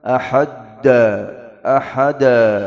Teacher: Jangan kasih dal tasydid, ahad da. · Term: qalqalah